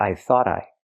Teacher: We hear the T in thought at the end pronounced as a fast D because it's between vowels phonetically.